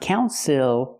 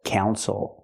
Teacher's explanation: the stress is on the first syllable the second syllable is not stressed